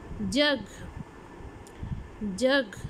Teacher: The blade or tip of the tongue is used just behind the alveolar ridge. Alveolar ridge के बिल्कुल पीछे पैलेट पर लगती है। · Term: palato-alveolar